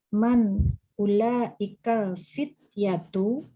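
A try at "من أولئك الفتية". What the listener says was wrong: Aywa ahsanti, mumtaz.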